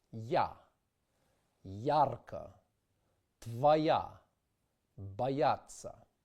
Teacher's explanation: In Russian, the vowel ah has also an iotized counterpart ya, which means that the sound ah is preceded by a brief fleeting y sound y. It is also known as a j glide heard in such words as ya, yara, bayata.